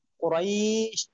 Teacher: লিনের হরফের পর হরফে অক্ফ হওয়ার কারণে মাদ্দে লিন কুরাইশ এক আলিফ টান হবে